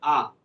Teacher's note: मुख द्वार, मुख जो द्वार होता है पूरा खोला जाता है · मुख को पूरा खोला जाता है, उसे विवृत कहते हैं